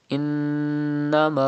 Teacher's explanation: And then you can see tashdid on noon. It is noon mushaddad. You have to pronounce with gunna.